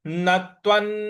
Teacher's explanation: जो व के ऊपर जो अनुस्वार है उसका उच्चारण हमें न लाना है